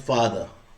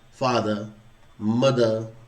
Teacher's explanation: आरपी मैंने received pronunciation होती है उसमें, कि हम वॉवल्स के बाद आर नहीं बोलते